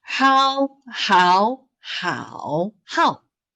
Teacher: third tone 喝熬好 there's a turn